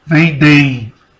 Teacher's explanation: Quando você tem esse vendem-o, percebe que no vendem tem uma nasalização. Você coloca a mão no seu nariz, por exemplo. · Sai som pelo seu nariz vibrou.